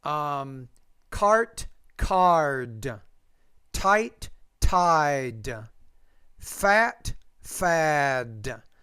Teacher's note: When the P's at the end of the word, because it's a voiceless consonant, the vowel is shorter. When the D's at the end, a voice consonant, the vowel is longer.